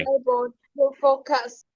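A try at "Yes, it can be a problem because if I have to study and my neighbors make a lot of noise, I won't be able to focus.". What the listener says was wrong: Perfect. Thank you.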